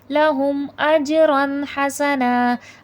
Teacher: اب دیکھیں اجرن میں دو زبر ہے لیکن یہاں پر غنہ نہیں ہوگا